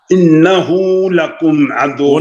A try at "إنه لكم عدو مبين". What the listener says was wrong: غنہ غنہ کیجئے انہ کے اوپر. نہیں غنہ ایسے نہیں ہوتا. ایک الف. إنه لكم عدو مبين.